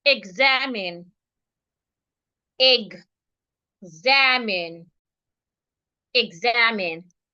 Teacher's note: So we're stressing the second syllable. So because we're stressing the second syllable, it means that we are not stressing the E. Because we're not stressing the E, it means that the E should sound A.